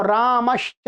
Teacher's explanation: ठीक है, तो रामस प्लस च, तो रामश्च, तो च आ गया तो स को श हो गया